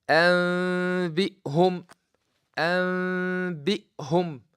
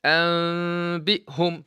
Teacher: What I'm doing, when you look at the Mus'haf, you will find that they put small meme above this noon to remind you. Change the noon into meme, then hide the meme with nose with a sound coming from the nose called ghunna. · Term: iqlab